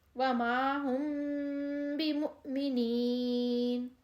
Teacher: دوسری صورت جو ہے اس میں ہے کہ میم ساکن کے بعد با آئے تو غنہ کے ساتھ اخفا کریں گے، اور اس کو اخفاء شفوی کہتے ہیں